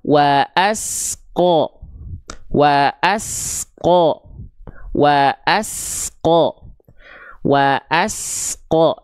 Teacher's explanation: Antara as dengan qo di sini tak boleh ada jeda di antara mereka. Karena huruf sin punya sifat shofir berdesis. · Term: sin bersukun